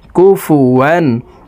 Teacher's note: প্রিয় দর্শক, তানউইনের পর ইজহারের হরফ হামজা আসছে, এই কারণে তানউইনওয়ালা ওয়াওটি গুন্নাহ ছাড়া স্পষ্ট করিয়া পড়তে হবে